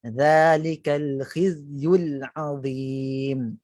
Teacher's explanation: hujung lidah memang dia akan bersentuhan dengan dakhiliyah safha ni, safha dakhiliyah ni, bahagian permukaan gigi bawah ni. Kalau tuan-tuan dan puan-puan cuba betul-betul, memang kita dapat rasakan itulah makhrajnya. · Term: zai